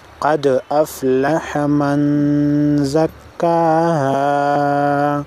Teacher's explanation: نون ساکن کے بعد حروف اخفاء میں سے زا آئی ہے، لہذا نون ساکن کو غنہ کر کے پڑھیں گے